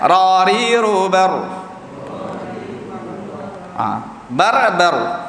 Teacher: Ra, yang mana kita sebut dalam 2 kali getak saja sifat dia takrir.